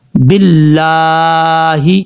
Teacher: لام کے اوپر کھڑا زبر ہے، اس کو مد اصلی بولتے ہیں، ایک الف کی مقدار لمبا کریں گے۔